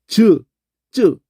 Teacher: 즈 할 때를 보면 요 혀 중간이 딱딱한 입천장에 붙었다 떨었다 하면서 이게 나요.